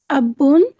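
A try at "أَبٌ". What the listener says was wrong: एक मिनट एक मिनट एक मिनट एक मिनट एक मिनट, अब बुन आप क्यों पढ़ रही है? बा के ऊपर शद तो नहीं है? है तो आप अब बुन क्यों पढ़ रही हैं? अब बुन, अब बुन मीन कि आप उसको बा के ऊपर शद साथ पढ़ रही हैं। पढ़ेंगी अबुन।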